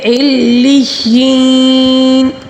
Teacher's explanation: علیین دیکھیں 2 تشدید ہے یہاں پہ، دونوں کو مضبوطی کے ساتھ پڑھنا ہوگا، ٹھیک ہے، جمع ٹھہراؤ کے ساتھ تشدید کو پڑھنا ہوگا، لیکن یہاں پر 2 تشدید ہے، علیین، اور یا مدہ بھی ہے، اس کو ہم 3 الف کے برابر کھینچ کر پڑھیں گے۔